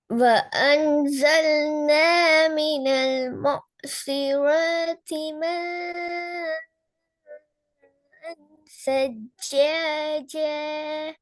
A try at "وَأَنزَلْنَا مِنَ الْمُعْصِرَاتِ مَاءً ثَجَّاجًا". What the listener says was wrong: இச் என்ற சவுண்ட் வரக்கூடாது போன கிளாஸ்ல. சச்ச சச்ச இச் என்ற சவுண்ட் வரக்கூடாது.